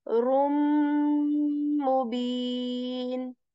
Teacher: I'm also doing idgham, which is like assimilating the sound of the tanween into the next letter of meme, rum. But I'm also staying here on meme and making a nasal sound.